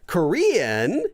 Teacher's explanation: it goes up and then down and then back up again